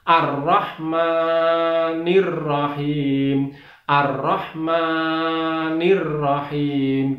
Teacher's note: Kemudian lafal mimnya, ma itu dibaca 2 ketuk karena di sana ada fathah berdiri